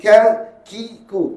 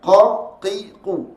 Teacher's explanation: Huruf qaf keluar daripada pangkal lidah, diangkat menekan langit-langit lemut sebelah atas.